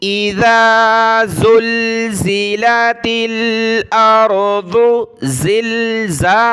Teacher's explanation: اذا زلزلت الارض زلزالها، زال پر ہم نے زبان نکالنی ہے، زا کو دانت ملا کر سختی کے ساتھ پڑھنا ہے